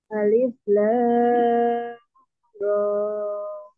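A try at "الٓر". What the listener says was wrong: Awas, roknya jangan tuh panjang, 2 harokat, jangan 2 rokaat, ya. Nah, roknya 2 harokat.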